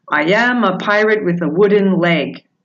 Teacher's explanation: with the sentence I am a pirate with a wooden leg one unstressed syllable followed by a stressed one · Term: iambic pentameter